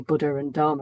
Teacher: people will commonly just say Buddha and Dharma without any aspiration